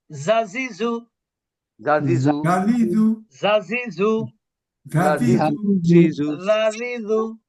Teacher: জাজিজু এটা কিন্তু জিহ্বার আগা, উপরের দাঁতের আগা